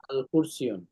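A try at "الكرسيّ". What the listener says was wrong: আল কুরসিয়্যু। মানে তানবিন হবে না শেষে, আল কুরসিয়্যু।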